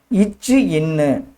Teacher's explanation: நாவின் இடை நடு அன்னத்தின் இடைப்பகுதியை தொடுவதால் இந்த எழுத்து உருவாகிறது